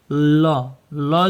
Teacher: ल जो है व्यंजन पार्श्विक है